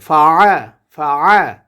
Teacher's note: আইন কণ্ঠনালীর মধ্যখান থেকে